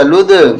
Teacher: یہاں دال پہ قلقلہ ہوگا